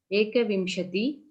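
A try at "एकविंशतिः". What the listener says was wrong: No. Listen. You must, wherever that Visargam is there, you must pronounce it properly.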